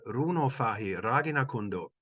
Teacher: Ragina again has two short syllables, Ragi, which form one heavy lift by resolution. So a clear case of the offline Ragi, the B line has resolution, and hence we get a heavy lift, which is stressed.